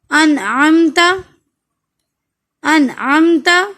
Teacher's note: اب یہاں نون ساکن کے بعد عین تو پھر اظہار